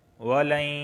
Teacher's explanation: نون ساکن کے بعد یا آیا ہے، اور یا جو ہے یہ حروف یرملون میں سے ہے، تو لہٰذا یہاں پر ادغام اور غنہ دونوں ہوگا